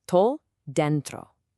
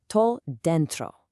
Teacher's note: You want to hit that den hard and let the tro just softly roll right off of it.